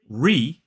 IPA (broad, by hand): riː